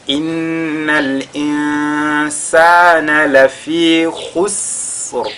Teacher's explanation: Innal insana, au niveau déjà de Noun qui est mushaddada, on fait al-ghunna. Insana, nous avons un Noun sakina suivi de la lettre sin, on fera al-ikhfa à ce niveau.